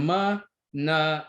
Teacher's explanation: all these sounds are pronounced uh with the air flowing through your nasal cavity